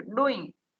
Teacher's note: ડુ ઉપર ભાર પાડવાનો છે